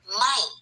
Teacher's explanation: you need to have the negation word which is the word ไม่ falling tone